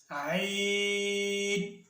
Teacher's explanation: عین ادا ہوتا ہے وسط حلق یعنی حلق کے درمیان والا حصہ